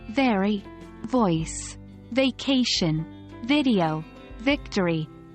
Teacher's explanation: pushing air out between them it is important to remember that the V sound is voiced which means your vocal cords vibrate while making the sound · The V sound is produced by gently placing your top front teeth onto your bottom lip and then pushing air out between them. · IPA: /v/